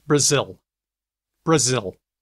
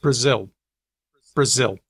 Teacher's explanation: Word final L sounds a lot like W for a whole lot of people. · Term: L vocalization